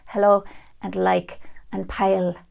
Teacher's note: in Dublin you'll hear the front l a lot more in both positions